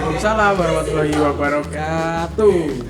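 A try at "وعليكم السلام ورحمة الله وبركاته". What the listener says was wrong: Jangan kayak anak TPA dong jawabnya Mas. Yang semangat. Enggak sepaneng tapi itu nadanya kayak anak TPA.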